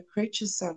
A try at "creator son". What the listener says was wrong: Creator son. Creator son. You said creature son.